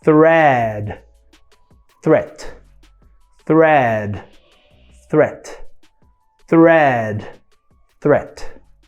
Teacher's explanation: Quando uma palavra é terminada em puff of air, esse T, né, sem o som, né, sem a vibração das pregas vocais, a vogal imediatamente anterior, ela vai ficar um pouco mais curta do que a vogal de uma palavra que termina com um som vozeado